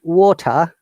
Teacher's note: in american english in most of the cases t is a flap t we they sound like d like we can we said water